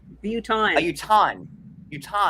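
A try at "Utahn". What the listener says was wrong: Yeah, it's just like Utah, and then there's just an N at the end. There's not even an extra syllable. There's just an N after the H. Utah.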